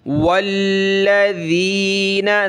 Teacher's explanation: لام کے اوپر یہ تشدید تو لام کو جمع کر سختی کے ساتھ پڑھیں گے